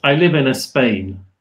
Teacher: they pop in a little a little extra vowel